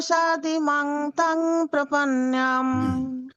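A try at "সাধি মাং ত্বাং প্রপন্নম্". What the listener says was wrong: এই যে আমরা তাং মাং বলছি না, ওই যেগুলো ত্বাম, ম উচ্চারণ হবে, হ্যাঁ, অনুস্বরটা এখানে, এখানে অনুস্বরটা অং না হয়ে ম উচ্চারণ হবে, ত্বাম, হ্যাঁ, ত্বাম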